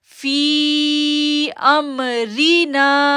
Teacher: اب دیکھیں فی کو ہم نے 3 سیکنڈ کے لیے کھینچا, 3 سے 4 سیکنڈ کے لیے کھینچا, اور پہ ہم نے حمزہ کو میم کے ساتھ جوڑا. را کو جو ہے وہ ہم نے باریک پڑھا کیونکہ را کے نیچے زیر ہے